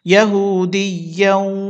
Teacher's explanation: তো তানভিনের পরে যদি ওয়াও আসে ওয়াও হচ্ছে ইদগামে বাগুন্নার হরফ গুন্না করতে হবে